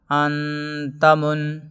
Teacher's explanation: تنوین یا نون ساکن کے بعد حروف اخفاء آئیں تو نون کی آواز کو ناک میں چھپا کر پڑھنا چاہیے، نوک زبان تالوں سے ہٹا کر